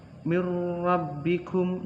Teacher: nun mati bertemu dengan huruf ra, itu idgham bila guna